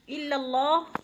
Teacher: اللہ کی لام باریک پڑھی جائے گی